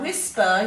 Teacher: when you say that you can feel air after the w if you put your hand in front of your mouth so you know there's an h after the w a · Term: wh sound